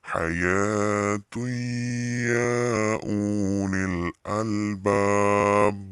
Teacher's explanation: bacanya itu memasukkan dan mendengung, dengan mendengung gitu ya.